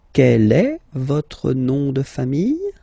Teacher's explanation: just raise a little bit your voice at the end of the question